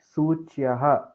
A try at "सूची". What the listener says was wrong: सूची नहीं सू ऊ दीर्घ उकारा सूची